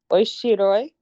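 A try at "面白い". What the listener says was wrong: You're very close. Omoshiroi. I don't know if you said the mo.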